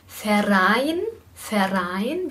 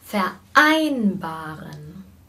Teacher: wir verbinden das nicht sondern wir haben hier einen vokal einsatz